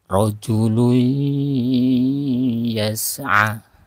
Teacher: Contohnya pada ketika ada nun mati bertemu dengan huruf ya, nun mati atau tanwin bertemu dengan huruf ya, maka memasukkan tanwin ke dalam huruf ya, kemudian disertai dengan guna atau ditahan suara, kemudian dikeluarkan udara dari hidung dan mulut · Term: idgham biguna